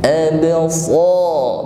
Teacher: huruf ba sukun, maka tampak di sini sifat qalqalah, ada bunyi yang memantul ab, namun ringan saja